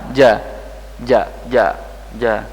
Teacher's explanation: syiddah kuat suara tertahan sempurna saat pengucapan karena tekanan lidah yang kuat ke langit-langit